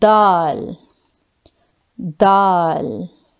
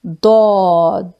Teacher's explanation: you can read Dal with thin sound Dal Dal while door you can read with full sound